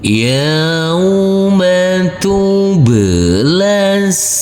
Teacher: Di sini ada tanda baca tasydid yaitu di huruf sin. Huruf sin nanti kita tekan dan kita tahan saja dengan 2 harokat.